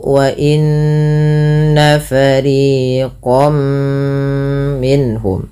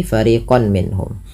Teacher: Kalau huruf setelahnya mim, maka masukkan tanwinnya bunyi nunnya mengganti dengan bunyi mim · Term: idgham bighunah, idgham bi gunnah